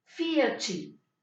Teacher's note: La T con la I va a tener el sonido chi.